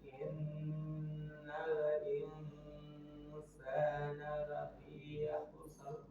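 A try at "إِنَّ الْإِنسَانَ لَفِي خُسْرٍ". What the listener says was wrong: Nah, ini belum khusus rnya belum tebal.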